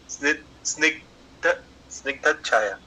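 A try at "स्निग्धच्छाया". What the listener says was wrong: स्निग्ध आधा च भी है ना पहले, स्निग्ध छाया।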